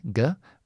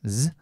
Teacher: So, this is just the K. We voice the K, guh. Voice the S, zuh.